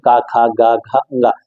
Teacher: कंठ का मतलब क्या होगा कि ऐसे वर्ण जिनको बोलते समय हमको ये लगे कि हम सीधे गले से बोल रहे हैं